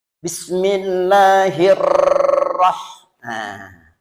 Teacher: Dan ro itu jangan terlalu banyak getaran. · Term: ro tafkhim tebal